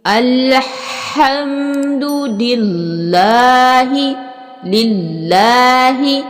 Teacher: لفظ اللہ کی لام کو موٹا ادا کریں گے